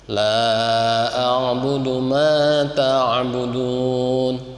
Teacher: kemudian la itu panjangnya 4 harokat